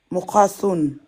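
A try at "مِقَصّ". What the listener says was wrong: Appuie sur Sod. Mim kasra. Miqassun. Miqassun. T'appuies sur Sod. Miqassun. Miqassun.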